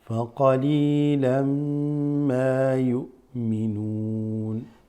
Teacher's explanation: Faqalilan, this an mixes with the meme.